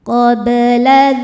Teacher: Huruf ba sukun dihukumi qalqalah sughra sebab ba sukun sukunnya sukun asli dan ada di tengah bacaan. Cara membacanya huruf ba ini dipantulkan dengan pantulan yang kecil.